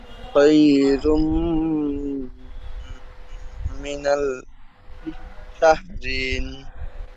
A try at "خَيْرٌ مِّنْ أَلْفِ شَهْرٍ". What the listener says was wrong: মিনাল শাহরিন হবে না, খায়রুম মিন আলফি শাহ, খায়রুম মিন আলফি শাহ বলেন। আল বলে গুণনা করবেন না, হামজা লাম জবর আল, আলফি শাহ, শিন হা র জবর শাহ,